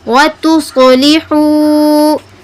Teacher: صوت پر کیا آئی ہے تفخیم. وَتُصْلِحُوا اور حروف مدہ بھی آیا ہے تو اس لیے ہم نے اس کو تھوڑا سا کھینچا.